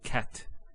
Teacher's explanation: So we say cat. So the T doesn't have any vowel associated with it. It's actually just a stop on the T. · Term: sukoon